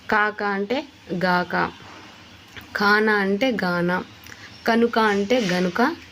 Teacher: తారుమారు చేసి పలుకుతుంది తారుమారు కాదు కానీ మార్చి ఆ ప్లేస్ నే మార్చేస్తున్నారు క ని తీసేసి గ పెట్టేస్తున్నారు